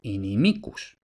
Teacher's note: Ahora ya época literaria, el acento ya no va siempre en la primera sílaba fijo, sino que sigue la regla de la penúltima sílaba y como esa i en la penúltima sílaba es larga, lleva el acento